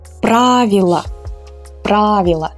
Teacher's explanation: So again, in the singular form, since the ending is not stressed, we pronounce it as a weak A.